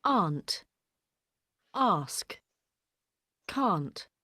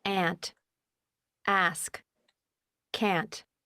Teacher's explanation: It's more open in American, and also in American English, they don't have the A sound of aunt and ask and can't. It's more of an and.